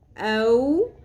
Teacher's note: زبر با، رب، کاف زبر کا، ربک، حمزہ زبر واو، او، واو ساکن سے پہلے زبر حروف لین میں سے ہے، یہاں اس کو نرمی سے ادا کرنا ہے ، او نہیں پڑھنا، او، ہا کھڑی زبر ہا، ایک الف